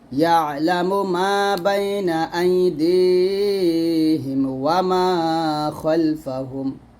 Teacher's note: এখানে খল হবে, খাল বলা যাবে না